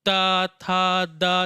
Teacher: देखिए ता था दा जब बोलते हैं तो जिह्वा हमारी कहाँ टकराती है, दांत में टकराती है। इस कारण ताथा दाधा का उच्चारण स्थान क्या होता है दोस्त, दंत होता है।